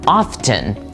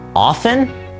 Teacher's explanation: the T in this word is completely silent